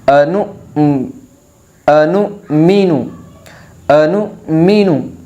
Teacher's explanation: ہم اس بات پر غور کریں کہ جہاں پر واو کے اوپر حمزہ ہے اور حمزہ کے اوپر اگر جزم ہے تو وہاں حمزہ ساکنہ ہوگا، نون کو حمزہ ساکنہ سے ملائے گے، نون واو پیش نون نہیں پڑھا جائے گا بلکہ نون حمزہ پیش نو، اور حمزہ ساکنہ کے پڑھنے میں جھٹکا ہوتا ہے تو ہم نو کو جھٹکے سے پڑھیں گے، انو انو مینو انو مینو۔